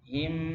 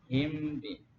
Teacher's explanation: Tapi sisa mimnya masih ada, dengungnya masih ada. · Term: ikhfa